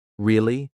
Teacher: if they say it with a rising tone really they're surprised